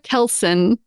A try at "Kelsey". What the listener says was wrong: No N. Kelsey.